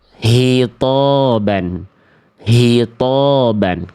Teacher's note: dilafalkan dari pangkal tenggorokan ya. Itu mah bunyinya huruf H besar.